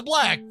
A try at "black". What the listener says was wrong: You're just saying that B a little too hard. Hard B.